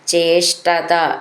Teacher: ധ്യായന്ത്യ ധ്യ എന്നുള്ള അക്ഷരം നന്നായിട്ട് ഊന്നി പറയാനുള്ളതാണ്. ചേഷ്ടത ഷ്ട ഷ്ടാന്ന് ഒട്ടും ഊന്നി പറയണ്ട.